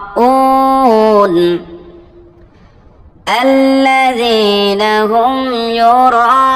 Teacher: র এটা 4 আলিফ লম্বা হবে 4 সেকেন্ড, কারণ এই যে আপনারা তীর চিহ্ন দেখতে পাচ্ছেন এটা যখন থাকবে তখন এর আগের যে হরকতটা আছে এটা 4 আলিফ লম্বা করতে হবে।